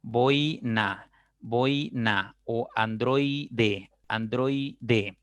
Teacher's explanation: La unión de la vocal OI, la O es abierta y la I es cerrada. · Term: diptongos decrecientes